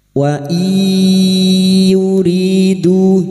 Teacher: Nun sukun bertemu ya idgham bi gunnah, masuk ke huruf ya dan mendengung selama 3 harokat